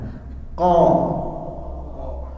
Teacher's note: Di mana tempat keluar hurufnya? Di atas tenggorokan, di pangkal lidah.